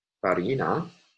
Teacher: the stress would have fallen on the second to last syllable because it contains a long vowel, and in French, it falls in the final syllable, farine.